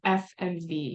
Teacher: so your lip touches your teeth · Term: labio Dental